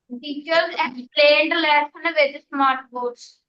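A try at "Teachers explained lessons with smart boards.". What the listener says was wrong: let's not overemphasize on the last syllable of a word. Speak softly.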